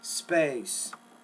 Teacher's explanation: Good job on the space. You carried the vowel sound out longer because it's a long vowel.